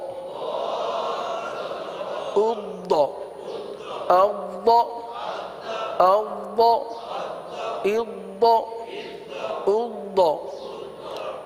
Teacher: اض حمزہ ضاد زیر اض، اض نہیں ہے، قلقلہ نہیں کریں گے یہاں پر، قلقلہ نہیں ہوگا بلکہ آواز کو جمائیں گے، صحیح ہے، اور تھوڑی سی آواز جاری کریں گے